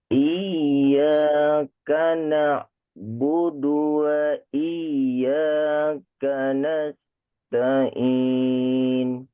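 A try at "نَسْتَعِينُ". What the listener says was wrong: Sedikit lagi. Nas nas lebih jelas sin-nya ya.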